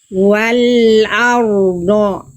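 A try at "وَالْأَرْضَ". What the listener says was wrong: Ro-nya nggak jelas. Wal ardo.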